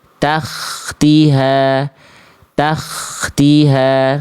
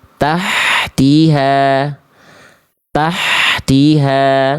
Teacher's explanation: Nah, Perhatikan yang H yang ini nih, H kecil nih. Tengah tenggorokan mengalir bisikan dengan lembut.